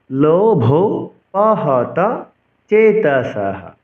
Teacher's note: বিসর্গের উচ্চারণ হ করতে হবে।